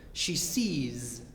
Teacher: When we add S, it sounds like Z.